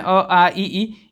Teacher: निर मतलब होता है निरअनुनासिक, नाक का प्रयोग ना हो, ठीक है। तो जिनका जब उसका उच्चारण करेंगे तो सिर्फ हवा जो है मुख से निकलती है, नाक से नहीं निकलती है।